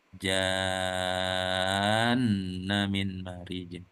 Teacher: jadi kalau di tengah kalimat ja-nya betul dipanjangkan 6 ketukan, langsung dilanjutkan dengan tasdid nunnya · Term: mat lazim mutsaqal kilmi